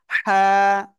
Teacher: হলকের মধ্যখান বা গলার মধ্যখান থেকে চেপে ধরে হাফ টেনে পড়তে হবে আর হালকা বাতাস বের হবে